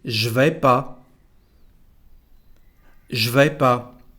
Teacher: The second sentence, well, we don't pronounce ne, so it is je vais pas.